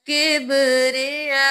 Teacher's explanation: جا زبر الف مد یا، 5 الف کے برابر کھینچنا ہے